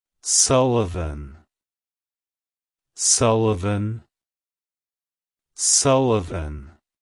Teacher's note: emphasize the first syllable Su and lightly pronounce the uh in the second syllable followed by a clear aant sound like hello Sullivan goodbye Sullivan